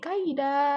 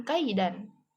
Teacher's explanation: Jadi dibaca itu waqaf tuh. Jadi tanwinnya hilang. Jadi kaida dibacanya bukan kaidan. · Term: mad iwad